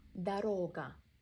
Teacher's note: Second O is stressed, first one we pronounced as a.